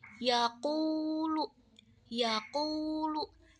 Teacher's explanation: W mad itu memanjangkan bunyi u atau yang berharakat domah contohnya yaakulu yaakulu Nah ku-nya itu adalah contoh dari huruf madnya